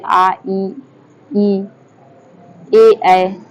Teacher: जिन स्वरों के उच्चारण में होठ वृत्तमुखी या गोलाकार नहीं होते हैं उन्हें अवृत्तमुखी स्वर कहते हैं।